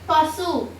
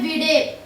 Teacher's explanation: தன்னுடைய உகரமானது ஒரு மாத்திரை அளவு முழுமையாக ஒளிக்கும் குறையாது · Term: முற்றியல் உகரம்